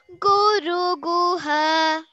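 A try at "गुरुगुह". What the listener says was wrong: Guru Guha has to come down a little. Guru Gu. Guha. Guha. Ru Guha. Guru Guha. Gu goes at sa. Guru. Guha. Sing the Guru separately, Guha separately first, then we'll join. Guru Guha. You imagine that you're coming down the steps, okay?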